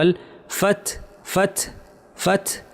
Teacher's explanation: নাস রুল্লাহি ওয়াল ফাতহ, এই অংশটা বলাটা একটু কঠিন লাগতে পারে, কারণ এখানে তা আছে এবং তায়ের একটা ছোট্ট বাতাস আছে, তারপরে আবার হা আছে।